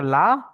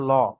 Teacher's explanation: লা বলার সময় মুখ গোল হচ্ছে না সিম্পল থাকছে ল যখন বলছি তখন আমাদের মুখ গোল হচ্ছে